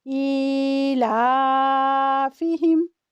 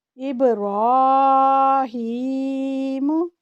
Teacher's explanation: کسرہ اشباعیہ کو یا ساکن کی طرف مائل کرتے ہوئے پڑھیں گے اور 2 حرکات جتنا ٹائم دیں گے